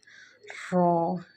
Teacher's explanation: رو کو ایک تو موٹا پڑھا جائے گا اور دوسرا جو ہے رو کو پڑھتے ہوئے وائبریشن آنی چاہیے